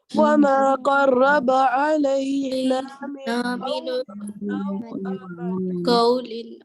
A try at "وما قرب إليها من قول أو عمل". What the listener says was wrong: لمبا نہیں کرنا. وما قرب إليها من قول أو عمل.